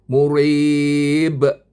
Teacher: dia panjang sikit pasal ada ya ada mad asli